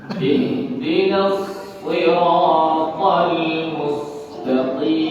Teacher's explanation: Qaf ditekan karena keluarnya di pangkal tenggorokan.